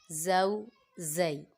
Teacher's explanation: زا حروف صفیریہ میں سے ہے، اس کی سیٹی کا خیال رکھیں گے، اس میں سیٹی نکالنی ہے